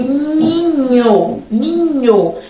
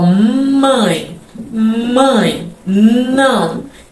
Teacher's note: E ninho, a gente até sente um pouco de vibração assim no nariz. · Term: nasais